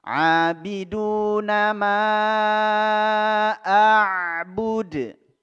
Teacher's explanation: bertemunya mad tabi'i dengan hamzah dalam 2 kata atau 2 kalimat. Ya, itu disebut dengan mad jaiz munfasil. Ya, kita baca 6 harokat.